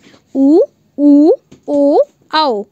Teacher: इनको बोलते समय जो मुंह है वो उसमें वृत्त का आकार बन रहा है, मतलब जो ओंठ है उनमें आपका वृत्त या राउंड राउंड आपका शेप बन रहा है, इसलिए ये आपके वृत्ताकार स्वर होंगे।